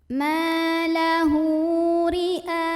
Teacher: Ma lahu ri'a, ra-nya ini dibunyikan secara tartik karena ra berbaris dan barisnya di bawah kasrah, maka bacanya tipis saja, ringan, tanpa harus mengangkat pangkal lidah kita.